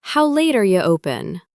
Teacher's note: are you, often shortens to are ya or a simple ya sound